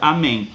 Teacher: esse M ali no finalzinho da palavra amém vai ter som de I. Eu estou falando de som, tá?